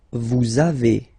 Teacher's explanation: the little liaison, little link between the two